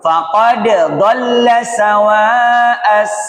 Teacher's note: untuk huruf dal qalqalah dengan d yang bersampingan jangan diidgam